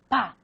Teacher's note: Hay una obstrucción del aire y después hay como si fuera una explosión. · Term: oclusiva